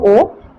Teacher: ओ का अगर हम उच्चारण करें दोस्तों ओ तो कांट का भी इसमें सहयोग हो रहा है